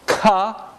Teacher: there's a complete closure by bringing the back of the tongue against the velum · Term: minus continuant